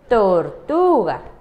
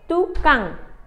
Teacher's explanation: la te su sonido es con la lengua un poquito de fuera